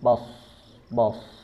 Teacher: dari segi suara dia bersifat rokhwa, tekanannya ringan bahkan terkesan mengalir begitu saja. Tahunya ketika dia sukun, bos.